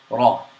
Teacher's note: The ra is pronounced slightly with a vibration of the tongue, but the vibration is not exaggerated. So it's not raw.